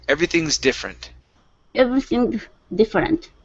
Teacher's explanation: Instead of z, okay, connect the s and the d.